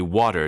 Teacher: much like the way we say water today where the T sounds almost like a d